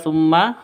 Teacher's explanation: Mim tasydidnya berdiri sendiri, gunnah musyaddadah.